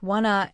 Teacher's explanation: Want to often sounds like wanna in fast speech